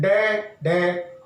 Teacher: तो जब हम उच्छिप्त व्यंजन जो डे और ढे होते हैं, जब हम इनका उच्चारण करते हैं तो हमारी जो जीभ की नोक है वो झटके से नीचे गिरती है, ऊपर जाती है डे ढे और नीचे तुरंत ही नीचे आती है, इसलिए इनको उच्छिप्त व्यंजन कहा जाता है और इनको अतिरिक्त व्यंजन के नाम से भी जाना जाता है।